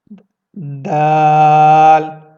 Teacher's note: اوپر کے دانتوں کے پیچھے حصے کے اوپر آپ زبان کو لگائیں گے اور آپ اس حرف کو ادا کریں گے.